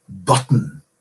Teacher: the N is behaving like a vowel there now there are several consonants that behave like this they're usually